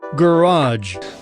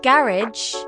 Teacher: Some words are stressed differently in British and American English, especially words borrowed from French. Americans often stress the last syllable, while Brits go for the first.